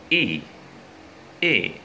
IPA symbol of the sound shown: i: